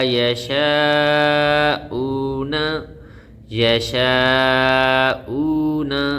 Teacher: وو مدہ ہے، وو کے اوپر جزم ہے، وو ساکن ہے، اس سے پہلے پیش ہے تو اسے وو مدہ کہتے ہیں. اس کو ایک الف کے برابر لمبا کریں گے